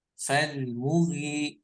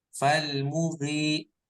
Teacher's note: Nah, ini mu-nya pendek ya. Falmughi langsung, bukan falmughi lah.